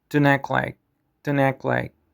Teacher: the T sound at the end of don't gets dropped.